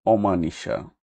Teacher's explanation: অ বর্ণের স্বাভাবিক উচ্চারণের উদাহরণ অনেক কথা অনাথ অনাচার অটল কলম শব্দের আদিতে না বোধক অ এর উচ্চারণ বিবৃত হয় মানে স্বাভাবিক হয় যেমন অনাচার অং আ যুক্ত ধ্বনির পূর্ব অ ধ্বনি বিবৃত হয়